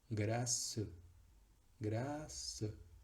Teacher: no va a haber tiempo de hacer una E larga. Solo nos quedaremos con una mini, en términos temporales, una mini E.